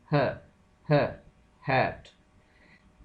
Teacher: ग्लॉटल is a sound produced in the space between the vocal folds, vocal folds के दरमियान वाली जो space है वहां से जो साउंड प्रोड्यूस होती है।